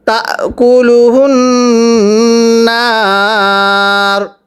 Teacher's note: ওয়াকফের সময় রয়ের উপর পেশকে বাদ দিয়ে পড়ব।